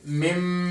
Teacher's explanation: नून को स्किप करके मीम को पढ़ेंगे, मिम, मिन की जगह मिम, और गुन्ना भी करेंगे, इसलिए इसमें भी रेड कलर दिया हुआ है। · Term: इक़लाब